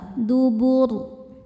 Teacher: Karena sebelum ro disukunkan ada harokat dhammah, maka ro-nya tebal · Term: tafkhim